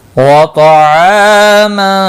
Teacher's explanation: طا مستعلیہ ہے، پور پڑا جائے گا